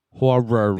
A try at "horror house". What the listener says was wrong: You need an extra syllable in there. You just said horror house. Horror. You're a second syllable quiet guy.